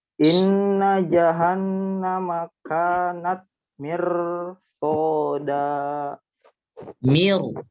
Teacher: Ro-nya ditebalkan. Mirsada. Karena setelah ro ada huruf isti'la yaitu shad.